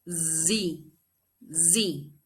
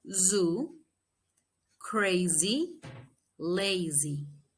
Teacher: Then we have the Z, Z. It is also voiced, is alveolar, and is fricative